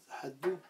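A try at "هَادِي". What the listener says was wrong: Non, Dou c'est le 9, donc forcément c'est par déduction. Hadi, voilà, donc tu continues l'allongement avec le Ya. Hadi, et te manque la dernière lettre.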